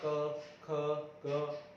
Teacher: इनमें कुछ भी हमारे घर्षण नहीं होगा, सिर्फ स्पर्श होगा